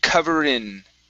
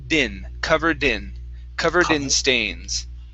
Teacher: when you pronounce this D put the D at the beginning of in